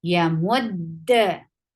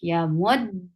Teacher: First dal will be hold, and the second dal will get sifa qalqala.